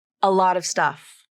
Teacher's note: when my speech might start to sound choppy slow or bumpy so you use the flap to smooth out the connection between the final T and the next syllable · the T in lot is almost always pronounced as a flap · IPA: /ɾ/